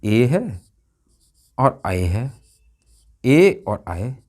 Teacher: कंठ तालव्य, कंठ तालव्य, कंठ तालव्य हैं ये, यानी कंठ और तालु दोनों से बोले जाते हैं